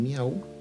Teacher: tenemos la vocal cerrada y la vocal abierta y la vocal cerrada u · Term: triptongo